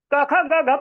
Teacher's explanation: क ख ग घ पढ़ते हैं तो पता चलता है कंठ से बोल रहे हैं